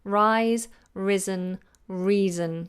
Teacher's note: That S is more like a Z because it's voiced. Z, rise, risen, and reason.